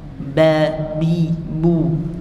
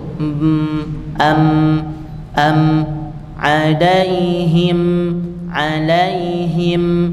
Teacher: bibirnya itu lebih kuat menempelnya dibandingkan dengan mim kalau mim tidak usah dikuatkan kan tapi sekedar ditutup m am